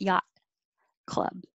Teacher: I won't release the T if it's at the end of the sentence or the phrase